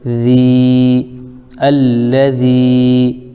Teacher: یا ساکن سے پہلے ذال کے نیچے زیر ہے اس لیے یا مدہ ہو جائے گا، اس کو تھوڑا کھینچیں گے